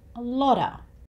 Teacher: the t sound here, again, sounds like it's somewhere between a D and a T. And this usually happens when the sound after the T is the schwa sound.